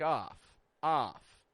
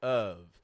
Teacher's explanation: our tongue is a little lower in the mouth it's a little lazier of a vowel and we're adding voice to that F we're not just making making a f but a v of